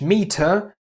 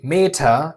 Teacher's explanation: Er in British is uh, but in German is always pronounced ah, a somewhat dull ah.